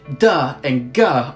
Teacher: duh and GA are both voice stops meaning your vocal cords are moving for it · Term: voiced stops